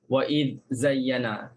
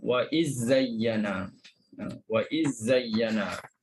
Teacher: Kena selesai zal dulu baru sebut zai